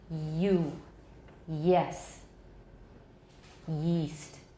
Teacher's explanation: Can you hear that noisy air coming out? No. So that's an approximant. 两 个 器 官 很 接 近， 可 是 没 有 接 近 到 产 生 乱 流。